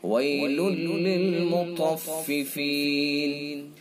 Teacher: طا کو پر یعنی موٹا منہ بھر کے پڑھیں گے